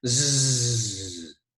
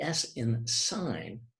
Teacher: you can feel the vocal cords vibrate when you say Z but when you say the s in sign right you don't use those vocal chords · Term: voiced